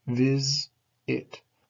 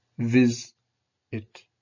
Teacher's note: The first part is stressed, it's stronger. Vis, it. You can hear that rising, falling.